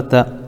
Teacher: تا کے اوپر زبر ہے، زبر کو جلدی پڑھیں، تھوڑا بھی نہیں کھینچے، زبر کی آواز اوپر کو اٹھتی ہے